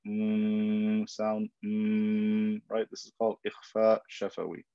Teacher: the noon into a meme i'm going to do what's called my lips are going to close and they're going to vibrate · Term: iklab